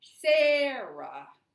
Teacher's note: So if I say my name. My voice drops when I do the second syllable.